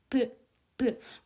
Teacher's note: 공기의 흐름을 입술을 이용해서 한번 막아요. 그 다음에 혀가 이렇게 올라가가지고 연구개 쪽을 한번 꽉 막아요.